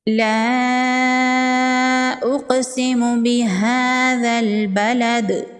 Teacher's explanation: یہاں پر مد منفصل ہے، 3 سے 4 الف کے برابر کھینچ کے پڑھیں گے۔ قاف حروف قلقلہ میں سے ہے، قاف ساکن پر قلقلہ ہوگا۔